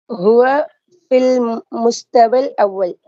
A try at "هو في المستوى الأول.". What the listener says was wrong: نعم مستوي அல்ல, நீங்க சொல்ற மாதிரி தான் சரியா. مستوى الأول. அந்த சொல்ல வந்து مستوى مستوى مستوي அல்ல مستوى.